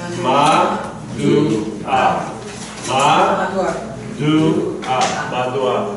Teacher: The ayin is silent.